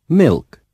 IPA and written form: mɪlk (milk)